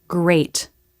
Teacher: start forming the next sound like in the word great here the lips can start taking the position for the r as we make the g